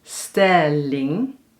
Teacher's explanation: dus de klemtoon ligt op stel